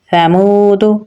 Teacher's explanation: واو کے ساتھ ملائیں گے کیونکہ واو کے اوپر جزم ہے، واو حروف مدہ میں سے ہے تو اسے ہم ایک الف کے برابر لمبا پڑھیں گے